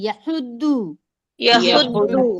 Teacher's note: क्योंकि ये द्वाद है तो इसे हमें थोड़ा मोटा पढ़ना है दाल जैसा नहीं पढ़ना